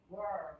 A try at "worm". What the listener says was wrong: You're changing to ol. We need worm. And now everybody put up one finger, touch your nose and lip, pull them down, warm.